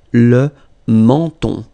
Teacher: So you get two nasal, the first one here, en, and then the second one here, on, le menton.